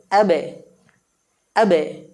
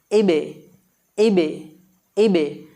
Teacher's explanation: দুই ঠোঁটের ভিজা অংশ থেকে বা বর্ণটি উচ্চারিত হয়